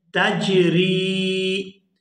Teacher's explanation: اور دوسری بات یہ ہے کہ یہاں پر جو یا ساکن ہے یہ یا مدہ ہے، اور را کو جب یا کے ساتھ ملائیں گے تو اس کو کھینچ کر ادا کریں گے اور اس کو پڑھیں گے تجری۔